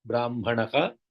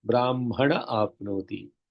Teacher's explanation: The visarga disappears because of the vowel. So when it is the yaha, like brahmanaha, apnoti, in chanting together, brahmanaha, the visarga goes because of the vowel.